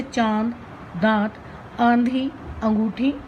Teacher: अनुनासिक, नेसल साउंड। जो स्वर मुख और नाक से बोले जाते हैं अनुनासिक स्वर कहलाते हैं। जैसे चांद, दांत, आंधी, अंगूठी आदि।